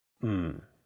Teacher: the first character is in a very low tone fourth tone it sounds a bit like when someone is thinking about a